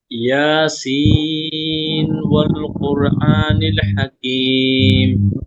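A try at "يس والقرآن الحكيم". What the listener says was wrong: جی آپ نے ادغام نہیں کیا، غنہ نہیں کیا، کوئکلی پڑھا، آپ نے اظہار کیا، گویا کہ کلیئر کر کے پڑھا نا۔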